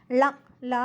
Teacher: மேல்வாய் பல்லின் அடியை நுனி நாக்கு ஒற்றுவது போல் தொட லகரம் பிறக்கும்